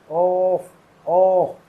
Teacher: अगर आप खुद से उच्चारण करके देखेंगे तो ओ हो होठ मिल रहे हैं और कंठ हिल रहा है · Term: कंठ और ओठ